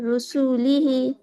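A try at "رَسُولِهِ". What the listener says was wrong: رسو پہ آپ کھینچ رہی ہیں. ہاں، رسولی ہی. رسولی ہی ایک دم الگ الگ مت پڑھیے. رسولی ہی.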